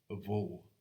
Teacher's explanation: in Munster anyway, it is normally a bilabial fricative, a vo. That differs in speakers who haven't lost the distinction between BH and MH.